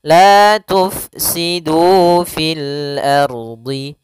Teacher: UF la tufsidu la tufsidu Kemudian pada lafal du di sini ada Mad thii kembali yaitu adanya domah bertemu dengan huruf wau panjangnya dua harakat